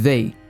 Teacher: é a língua entre os dentes e faz um som de Z e puxa o resto da palavra. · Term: TH com Z